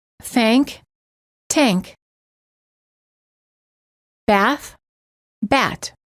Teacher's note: some non-native speakers incorrectly pronounce the voiceless th as a t